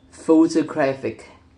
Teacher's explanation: The base word photograph is stressed to the first syllable, while photograph shifts stress to the second syllable. When the suffix ic or ic is added, the stress shifts again to the syllable immediately before the suffix, resulting in photographic. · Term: stress shifting suffix